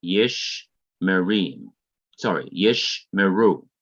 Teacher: Okay, so when two shawas, here are two shawas, come together in the middle of a word, the first shawa closes the one syllable and is therefore silent, that is, it is not to be pronounced, while the second shawa begins the next syllable